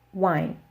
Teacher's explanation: in English we have wine it is one syllable but that's because we have a diphthong